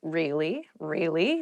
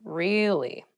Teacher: you can use it to show you interested in a conversation with upward intonation